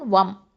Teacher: வாவ் ஃபதா மீம் சுக்கூன் வம். நடுவில் இருக்கக்கூடிய ஹம்சத்துல் வசலை உச்சரிக்க மாட்டோம்.